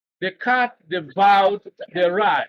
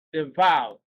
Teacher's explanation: The word devoured is the one stressed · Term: emphatic stress